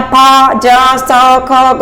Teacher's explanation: जब व्यंजनों का उच्चारण करेंगे तो दोनों अवयव इतने निकट आ जाते हैं कि हवा दोनों के बीच संघर्ष करती है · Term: संघर्षी व्यंजन